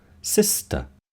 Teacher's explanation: In sister, the second S is followed by a voiceless sound t